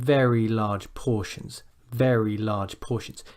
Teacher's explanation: So it's not like you're stressing each word individually and you're saying very large portions, but it almost becomes like one unit, and you start at a high point and you come down